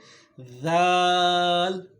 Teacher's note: زبان کا سرا جب ثنایا علیہ کے سرے کے ساتھ ٹچ ہوتا ہے تو یہاں سے ذال ادا ہوتا ہے